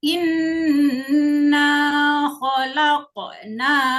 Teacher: Hukumnya adalah qalqalah. Berarti dibaca memantul ya anak-anak.